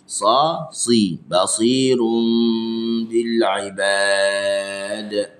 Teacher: Basi tebalkan huruf sad.